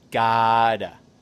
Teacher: le T au milieu d'un mot, avec l'accent américain, ça se dit comme un D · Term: D doux